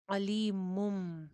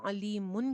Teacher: نون کی جو آواز ہوگی وہ میم میں چینج ہو جائے گی، پھر ہم نون نہیں پڑھیں گے بلکہ میم پڑھیں گے، اسی کو اقلاب کہتے ہیں۔